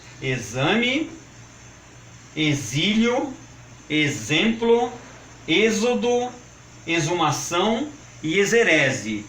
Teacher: atenção também para as palavras de X com som de Z, como por exemplo, exame, exílio, exemplo, êxodo, exumação e exerese.